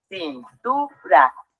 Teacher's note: la sílaba tónica se encuentra en la penúltima sílaba Eso la hace una palabra grave y como termina en r · Y es en donde nos damos cuenta que la sílaba tónica se encuentra en la penúltima sílaba